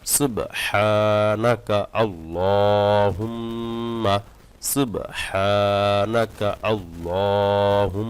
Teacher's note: সুবহ বলে থেমে যান তারপর হাটা চাপ দিয়ে বলবেন